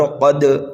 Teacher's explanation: قاف کو ہم موٹا کر کے پڑھیں گے، اس لیے کہ قاف حروف مستعلیہ میں سے ہے